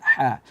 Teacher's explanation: ha juga tipis dan ha makhrajnya sama seperti ain di tengah tenggorokan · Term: ha tengah tenggorokan